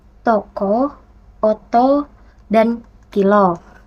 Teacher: Lalu ada bunyi O seperti pada kata toko oto dan kilo ini O kecil dia tidak diapit atau dia terbuka